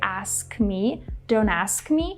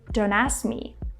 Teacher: Don't ask me, which is completely normal. But sometimes, guys, you might hear people drop the K completely and say, don't ask me.